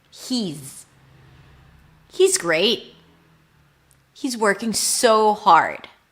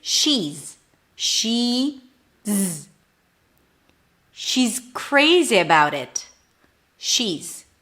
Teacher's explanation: Now, is reduces to z. Notice it's a Z sound. It's not an S